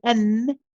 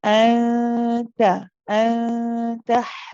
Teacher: Remember, we said that the tip of the tongue doesn't touch the place of noon, and instead it goes very close to the next letter, which was ta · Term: ikhfa haqiqi